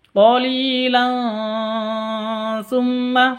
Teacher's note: tanwin bertemu dengan ta cara bacanya samar didengungkan